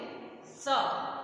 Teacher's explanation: जब इसको बोलेंगे तो जीभ दांतों से टच होगी, इसलिए ये दंत स है।